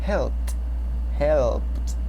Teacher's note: Yes, the final sound sounds like a P. So you add ed, but the ed sound gets like a T